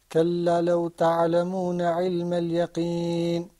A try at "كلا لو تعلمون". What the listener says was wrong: Can I hear you say كلا لو تعلمون instead of كلا لو؟ What's the difference between كلا لو and كلا لو? What does your ear tell you? Kallalaw and kallalaw. Okay, yeah, it's longer. It's longer.